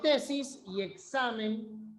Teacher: son graves porque el acento o sea la mayor fuerza de voz está en la penúltima sílaba pero no se tildan no se tiran por qué examen termine